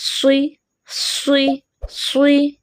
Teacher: صاد موٹا پڑا جائے گا، زبان کی جڑ کو تالو کی جانب بلند اٹھائیں گے